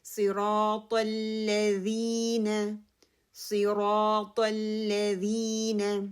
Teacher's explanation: را ہیوی ہوگا کیونکہ اس سے پہلے زبر آ رہی ہے · لام کی جو شدہ ہے اس کو پکڑنا ہے، اس پہ کلکلا نہیں کرنا